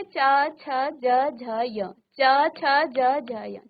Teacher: और जब आप इसका उच्चारण करेंगे तो आपकी जीभ किसी विशेष स्थान पर एक ही जगह बार बार टच कर रही है। ये स्थान है आपके मुख के अंदर, जिसको तालु कहा जाता है। तो इसलिए इस वर्ग के वर्णों को तालव्य कहते हैं।